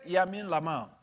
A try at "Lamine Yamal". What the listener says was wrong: Lamine Yamal. Lamine L-Y. You're doing Y-L. Yeah.